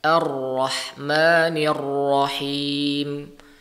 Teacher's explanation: ujung lidah itu mengalami getaran. Ya, mengalami getaran. Getaran yang terjadi ketika melafalkan huruf ra itu disebut dengan sifat takrir.